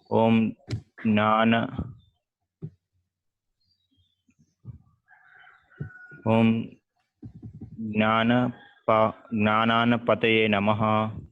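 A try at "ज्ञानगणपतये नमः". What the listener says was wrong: Jnana Ganapataye. It is Gana. Okay, the first letter is Jnana. Jnana Ganapataye Namaha.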